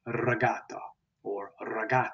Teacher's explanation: the r is trilled or rolled